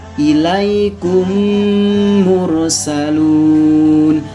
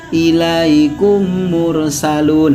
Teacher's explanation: cara membacanya dengan menyuarakan mim, yaitu didobel atau ditasydidkan. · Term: idgham mimi